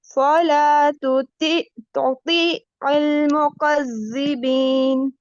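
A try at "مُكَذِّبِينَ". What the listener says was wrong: मुकज़्ज़ा में सीटी वाली आवाज नहीं आएगी. मुकज़्ज़िबीन.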